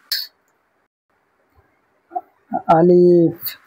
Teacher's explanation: আলিফ মুখের খালি অংশ হতে উচ্চারিত হবে আলিফ